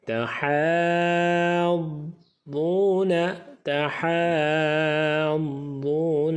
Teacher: ہا کی آواز صاف کر کے، جب ہا کی آواز ختم ہو رہی ہے مد کرنا ہے لمبا، یعنی کہتے ہیں اب ختم کرتے ہیں ساتھ ہی اس کے ساتھ آواز کے ساتھ ضاد کو ملا دینا، کیونکہ ضاد کے اوپر شد ہے تو شد میں ہم ملاتے ہیں پیچھے والے حرف کے ساتھ.